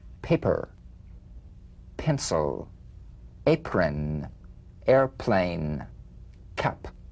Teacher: The whispered tap of this drumbeat P is played with a light springing apart of the lips, just like for the B. On the springing away, feel a B in a whisper without any puff of air.